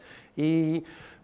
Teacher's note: there's a fixed tongue position, like in sheep, because e, you can keep that going forever